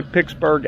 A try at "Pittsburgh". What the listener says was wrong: You didn't just hear yourself put a hard K in the middle of that? Pittsburgh.